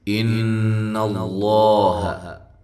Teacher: ان اللہ، یہاں نون مشدد پہ غنہ ضروری ہے، حمزہ کو تحقیق کے ساتھ ادا کرنا ہے۔ لفظ اللہ کو موٹا پڑھنا ہے کیونکہ اس سے پہلے والے حرف پر زبر ہے۔